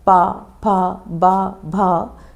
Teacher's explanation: ओष्ठ क्या है? दोनों होठों का हम प्रयोग करते हैं।